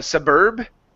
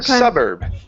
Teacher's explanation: the stress goes at the very beginning of the word